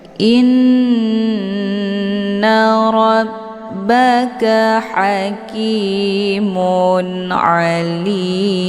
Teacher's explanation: Inna tasdid di huruf nun ini dinamakan dengan gunah musyaddadah cara bacanya didengungkan